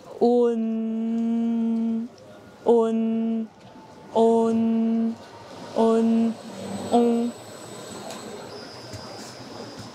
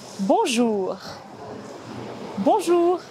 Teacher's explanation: Pour prononcer on, commencez par dire O, puis ajoutez le son N en l'allongeant et en le fredonnant. Essayez de répéter cela en raccourcissant le son petit à petit. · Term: voyelle nasale